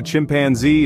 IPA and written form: tʃɪmpænˈzi (chimpanzee)